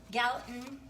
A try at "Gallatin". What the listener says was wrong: It's just Gallatin. We actually say the T.